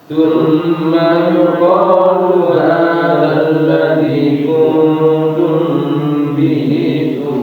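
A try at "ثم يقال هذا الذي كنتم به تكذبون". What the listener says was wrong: Coba kita latih Bapak ya, ketika membaca ikhfa itu jangan betul-betul membacanya dengan ang ya, tetapi dia seperti samar-samar, nah lebih kayak itu, bukan ang, kecuali nanti setelahnya adalah huruf kaf atau qaf ya, bisa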